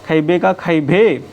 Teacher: जब अल्पप्राण ध्वनि जब अल्पप्राण ध्वनि महाप्राण में बदल जाए जाती है तो उसे महाप्राणीकरण कहते हैं। अल्पप्राण जब महाप्राण में बदलता है तो महाप्राणीकरण